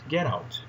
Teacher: in natural spoken language, it is common to connect the two words in this expression and pronounce 'gerout' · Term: connected speech